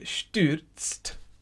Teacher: And it's a TS followed by a T at the end.